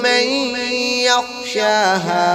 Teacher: من یخشاہا ادغام کے ساتھ غنہ ہوگا